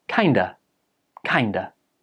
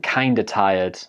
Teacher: of, like in kind of, quite often just becomes a and joins with the previous words